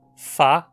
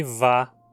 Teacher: fá, que é surda, e vá, que é sonora